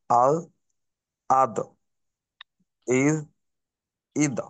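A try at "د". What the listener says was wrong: আপনার দদের উচ্চারণ কিন্তু অনেকটা জালের মতো বোঝা যাচ্ছে। জাল না, ব, আও, আও, আও, ইউ, উ, এরকম। জিহ্বার আগা সামনের দাঁতের সঙ্গে লাগবে না। দালের কলকলা।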